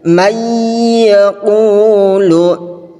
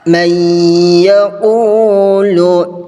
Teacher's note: Idgham bi ghunnah adalah nun sukun atau tanwin bertemu dengan huruf ya, nun, mim, wawu. Cara membacanya meleburkan nun sukun ke huruf berikutnya dan disertai ghunnah yang dipanjangkan 2 sampai 3 harakat.